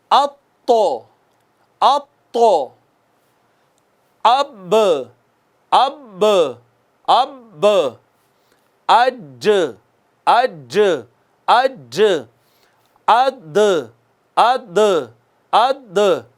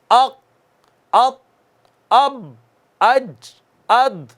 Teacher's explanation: جب یہ 5 ساکن آتے ہیں تو آواز لگ کر واپس آتی ہے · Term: قلقلہ